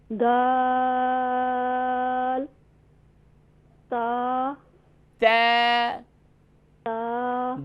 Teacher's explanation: دال کا مخرج یاد رکھیے دال کا مخرج یہ تینوں حروف کا مخرج ایک ہی ہے. جی یعنی کہ زبان کی نوک اور اوپر سامنے والے 2 دانتوں کی جڑ سے ادا ہوتے ہیں یہ تینوں حروف, لیکن ان کی صفات کے اندر فرق ہے. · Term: حروف نطعیہ